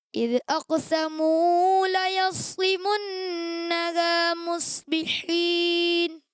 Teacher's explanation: یہاں واو مدہ ہے تو اس سے آپ 1 الف کے برابر کھینچیں گے، اس سے زیادہ نہیں کھینچیں گے